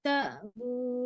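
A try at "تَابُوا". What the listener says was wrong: bukan tak tapi tabu.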